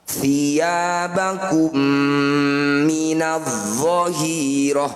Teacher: Mim sukun bertemu mim, disebut bacaan idgham mimi atau idgham mitsli. Cara bacanya bunyi mim sukun masukkan pada mim kedua. Mim pertama masuk pada mim kedua, dengungkan 2 harokat.